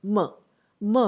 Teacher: ma by itself is a bilabial sound but there is definitely no lip spread involved in the production of ma by itself